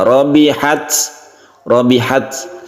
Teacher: ketika kita mensukun tak Karena dia sudah berubah tasydid ya rabbihat biasanya kalau sukun itu kan membentuk huruf s sedikit